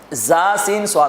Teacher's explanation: سیٹی والے حروف، جس میں سیٹی کی سی آواز آتی ہے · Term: حروف صفیریہ